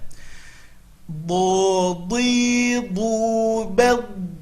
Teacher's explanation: Huruf do makhrajnya adalah tepi lidah ke gigi geraham atas. Jadi bukan do.